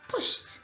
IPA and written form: pʊʃt (pushed)